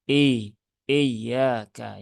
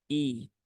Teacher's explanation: untuk huruf hamzah itu dia adalah huruf yang tipis maka tidak tepat ketika dibaca dengan menebalkan Hamzah